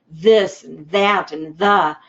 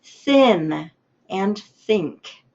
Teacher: We're going to give a noisy sound like in this and that and the, but we're going to give a quiet sound like in thin and think. So the TH can come together with two different sounds.